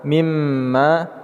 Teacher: kita menambahkan ghunnah pada mim dengan tashdid, “ma” kita panjangkan dengan dua harakat.